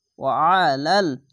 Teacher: আইনটিকে গলা চিপে পড়বেন, মোটা করে পড়বেন।